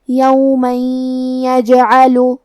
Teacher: ہم یہ تنوین کو یا میں ملا کے غنہ اور تشدید کے ساتھ یہ حکم کو ادا کریں گے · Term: ادغام